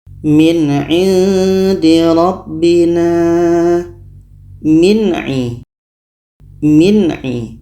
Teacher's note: Nun jelas, a jelas, dan tidak ada dengung. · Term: izhar halki